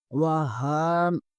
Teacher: ہا کے اوپر کھڑا زبر ہے، ہا کا بھی مخرج ادا کرتے ہوئے ہا حروف حلقی میں سے ہے، اسے حلق سے ادا کریں گے۔ ہا کے اوپر کھڑا زبر ہے، اسے ایک الف کے برابر کھینچیں گے۔